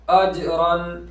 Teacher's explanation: دیکھو یہاں جیم کی آواز لوٹتی ہوئی آئے گی، قلقلہ ہوگا اس لیے کہ جیم حرف قلقلہ میں سے ہے.